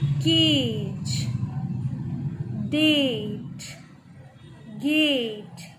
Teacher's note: A को हम सब में लंबा खींच रहे हैं थोड़ा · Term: लॉन्ग वॉवल साउंड्स